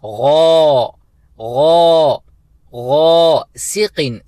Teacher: غین کو پر طریقے سے فل ماؤتھ کے ساتھ ادا کرنا ہے کیونکہ غین حروف مستعلیہ میں سے ہے، اور 2 حرکت کی مقدار کھینچنا ہے کیونکہ اس کے ساتھ الف حروف مدہ میں سے ہے۔ تو ہم پڑھیں گے غا غا غاسقین، سین کو ایک حرکت کی مقدار کیونکہ اس کے نیچے زیر ہے۔